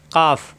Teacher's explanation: কাফ, জিহ্বার গোড়া থেকে একটু আগে বাড়িয়ে,